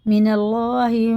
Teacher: اللہ کا لام بھی باریک ہوگا زیر کے ساتھ